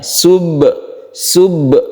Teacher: Ba ini bersifat syiddah kalau dalam sifat-sifat huruf itu. Dia itu ditekan ya. Subhan, tidak boleh merembet atau dilepaskan subhan, tapi langsungkan ke keras ya, dengan keras, maksudnya ditekan ya. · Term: qalqalah sughra